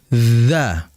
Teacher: huruf dzal keluar dari ujung lidah ya ujung lidah yang ditempelkan dengan ujung gigi seri bagian atas